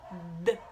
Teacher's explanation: Ele é um som linguodental, ou seja, a gente apoia a pontinha da língua atrás dos dentes, não necessariamente no dente, né?